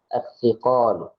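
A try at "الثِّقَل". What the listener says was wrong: Salah. Kemarin kita bukan as-thiqal. Gimana kemarin cara bacanya? As-thiqal, tidak panjang qafnya. As-thiqal.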